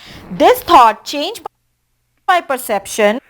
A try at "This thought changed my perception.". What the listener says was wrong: I would say this thought. I think you're saying thought, not taught, right? So you're not getting the tongue completely in between the teeth. This thought completely changed me. So you want to say it like that.